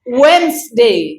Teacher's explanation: এখানে ডির উচ্চারণ হবে না